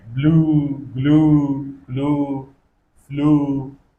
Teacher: the long back vowel lips rounded ooh sound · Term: oo sound